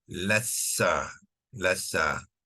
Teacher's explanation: Bila digugurkan, lam ni akan terus kepada sin, ya, lassa, lassa.